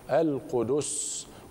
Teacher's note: السين الصفرية الموقوف عليها من المرتبة الثانية لمراتب التصفير